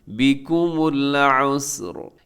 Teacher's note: لیکن وقف کریں گے را ساکن، را موٹی پڑی جائے گی